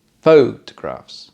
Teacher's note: first syllable stress for the noun